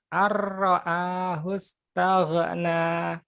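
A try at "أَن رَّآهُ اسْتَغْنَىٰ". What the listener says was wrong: Hati-hati goknya. Goknya, goin, tidak dibaca mantul. Jadi dimatikan. Arra'ahu istaghna. Tagna, matikan. Nah, saya coba arra'ahu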